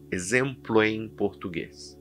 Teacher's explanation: Perceba que eu juntei as palavras exemplo em.